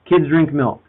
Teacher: 3 content words, 3 stressed syllables.